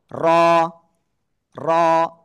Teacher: জিহ্বার আগার পিঠ উপরের তালুর সাথে লাগবে লাগিয়ে মোটা আওয়াজে এরকম মোটা আওয়াজে এক আলিফ টেনে উচ্চারণ করতে হবে